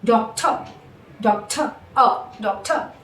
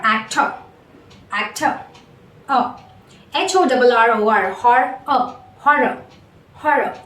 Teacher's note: The last sound is the schwa sound. The schwa sound, that is the shortest vowel sound we can hear.